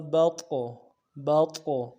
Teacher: با طا زبر بط، طا موٹا ادا کرنا ہے اور طا حروف قلقلہ میں سے ہے تو جزم کی وجہ سے قلقلہ بھی کریں گے